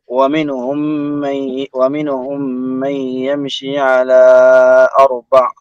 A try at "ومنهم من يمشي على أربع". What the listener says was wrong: لا أقصر هذا مد منفصل ومنهم من يمشي مش ومنهم لا ومنهم